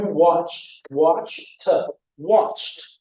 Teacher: Here we've got watched, now that ends in the /ch/, so you didn't watch/id/ TV yesterday, you watch/t/